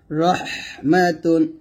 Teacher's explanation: র এর উপরে জবর বা পেশ হলে আমরা র টাকে মোটা করব